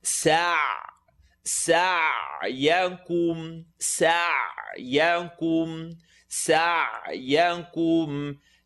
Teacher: Seen with a line on the top, sa, and then ayn, second part of the throat, so bite into it.